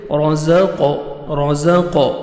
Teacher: وَمِمَّا رَزَقْنَاهُمْ، را کو مرزبر، را کو موٹا کر کے پڑھیں گے، زا کو زور سے پڑھیں گے، قاف حروف قلقلہ میں سے ہے، ڈبل ساؤنڈ آئے گا، اور قاف کو موٹا کر کے پڑھیں گے